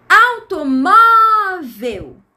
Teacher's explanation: A sílaba mais forte da palavra automóvel tá na penúltima sílaba. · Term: paroxítona